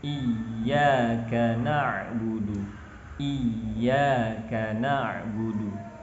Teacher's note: ketika ya bertasydid, haruslah kita meninggikan suara pada ya bertasydid tersebut untuk menjaga agar kandungan tasydid pada ya itu tetap utuh.